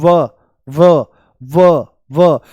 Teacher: इसके उच्चारण में दांत होठों को स्पर्श करते हैं। · तो जो ऊपर वाले दांत हैं ये होठों से मिल जाते हैं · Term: दंत ओष्ठ